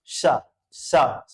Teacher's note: जब जीभ को कर्व करके उच्चारण करेंगे तो ताल विष इसका उच्चारण होगा